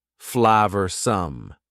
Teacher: Notice the pronunciation. Two schwa sounds there.